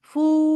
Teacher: ফু এর জন্য অবশ্যই মুখ গোল করবেন, নাহলে ফ এরকম শোনা যাবে